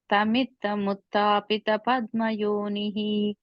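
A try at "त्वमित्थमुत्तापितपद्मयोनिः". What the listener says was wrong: second line. Twamittam. Twa sound. I think you said tam. It's twa. Twamittam uttapita.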